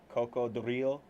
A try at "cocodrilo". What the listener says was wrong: Drilo. Cocodrilo. Coco, it's like drilo. Drilo. Cocodrilo. You just put a little bit more roll on the R.